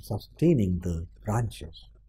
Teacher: sustaining the te has the stress, ing doesn't have, the doesn't have